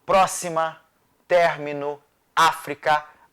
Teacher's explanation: A antepenúltima sílaba é tônica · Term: proparoxítonas